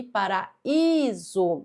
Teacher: Então é um i tônico, um i forte que forma iato com a vogal da sílaba anterior.